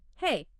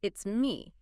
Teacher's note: the pitch isn't flat. It goes up slightly on hey and then it comes down at the end on me. Hey, up it's me down. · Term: rise fall pattern